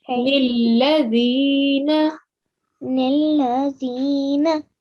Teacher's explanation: when you're joining the lam to the noon, make sure you're giving the lam just a 1 second timing